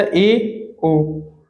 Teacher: यह है अर्ध संवृत स्वर, संवृत के समीप, यानी कि कुछ बंद होता है हल्का, जैसे ए, ओ।